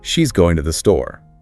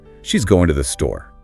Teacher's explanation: with a falling intonation at the end it's a straightforward statement but if you add a rising intonation it becomes a question